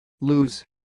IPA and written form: luːz (Loos)